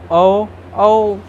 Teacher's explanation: औ को भी बोलने में वृत्त मतलब ओठ गोलाकार लगभग होता है। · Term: वृत्तमुखी